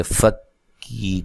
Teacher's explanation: فا کو کاف سے ملائیں گے، فکی، کاف کو باریک پڑھیں گے اور یہ یا مدہ ہے۔